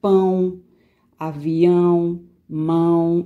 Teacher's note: vai sair lá mais pelo nariz do que pela boca